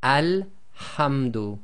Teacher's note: So the rule is, with a definite article, there's no sound before it, you read the Hamza-tul-Wasl as if it's got a fatha on it